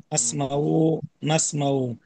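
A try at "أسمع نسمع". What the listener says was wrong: আসমাউ নাসমাউতে টান হবে না।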